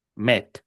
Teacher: como solamente tiene una única sílaba y solamente un acento, esa e no puede sonar i, va a sonar e